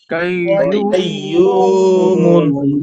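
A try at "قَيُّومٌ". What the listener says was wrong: কেউ কেউ কাইয়ুম বলতেছেন, শব্দটা তো কফ, তাহলে কাফ কেন উচ্চারণ হবে? কয়্যুমুন,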